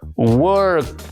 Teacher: El sonido de la letra final no produce ninguna vibración en la garganta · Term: voiceless sound